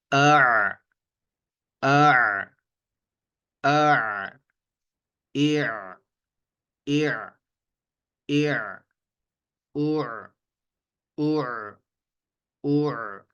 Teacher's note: قدرے نرمی سے اور بغیر جھٹکے سے، اور اس کی ادائیگی ہوتی ہے ہمارے گلے کے درمیان سے، جو کہ وسط حلق ہے۔ تو اس کو جب آپ نے ادا کرنا ہے تو فرسٹ ٹائم آپ نے گلے کو تھوڑا سا دبا دبا کر پڑھنا ہے، تو آہستہ آہستہ اس کی آواز جو ہے نا وہ بالکل درست ہو جائے گی، ٹھیک ہے۔